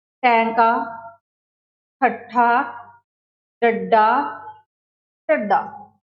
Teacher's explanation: इन्हां दा उचारण करते समय साडी जिहड़ी जीभ है हल्की जी उल्टदी है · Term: उल्ट जीभी धुनियां